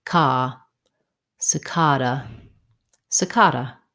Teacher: The second letter A says vowel schwa, duh, cicada. Another correct way to pronounce cicada is with an ah vowel in the stressed syllable.